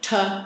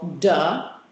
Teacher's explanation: same place of articulation but I'm also kicking in vocal fold vibration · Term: voicing